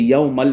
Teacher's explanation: لام جو ہے یہ حروف یرملون میں سے آتا ہے، ادغام کا قاعدہ ہے، لیکن ادغام وہ ہے کہ جو بغیر غننے والا، یعنی ادغام یرملون بلا غنہ، بغیر غننے والا، اس وجہ سے یومل پڑھیں گے.